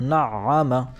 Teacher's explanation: عین پر تشدید آئی ہوئی ہے، لہٰذا یہ 2 مرتبہ پڑھا جائے گا۔ ایک مرتبہ اپنے سے پہلے والے حرف کے ساتھ مل کر حرف ساکن کی طرح، جیسے نع، اور دوسری مرتبہ اپنی اصلی حرکت کے ساتھ، جیسے ع، نع، 2 مرتبہ ہو گیا۔ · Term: حرف مشدد